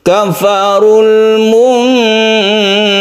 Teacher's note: munkar roknya ditebalkan atau tafkhim ya